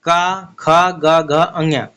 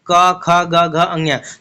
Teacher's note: क ख ग घ अञ तो ये कहां से आ रही है आपकी कंठ से आ रही है